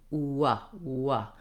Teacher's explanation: So I'm gliding between two positions as I make it. It acts a little bit like a vowel in that my tongue and my lips aren't really touching anywhere in my mouth. So if I had to say the W sound very slowly, it's kind of like I'm moving between an oo, very rounded, and an very relaxed. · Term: semivowel